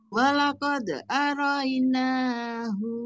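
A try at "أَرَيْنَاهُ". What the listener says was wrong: Hati-hati. Naknya kepanjangan, hu-nya juga jangan panjang, Bu. Hu-a.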